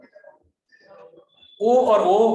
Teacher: ओ और ओ हमारे कंठ और ओष्ठ से उच्चारित होते हैं।